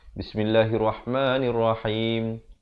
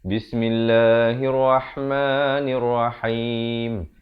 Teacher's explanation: Lafaz jalalah di sini dibaca nipis 2 harakat.